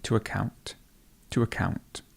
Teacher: So the stress would be on the second syllable.